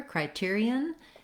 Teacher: the singular criterion has second syllable stress. So that means the tier syllable is long and has the clear vowel, and the other syllables are shorter and may have reduced vowels.